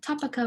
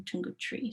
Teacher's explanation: what would regularly be a word final A vowel is being raised to this E, or represented with this orthographic Y when it's in word final position.